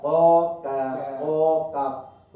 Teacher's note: زبان کی جہاں یہ ہے راؤنڈ وہ ختم ہو جاتا ہے، زبان کی جڑ اوپر والے نرم تالو سے قاف، قاف، اور اس سے باہر تھوڑا باہر نکل کر زبان کی جو جڑ وہی ٹچ ہوگی. کاف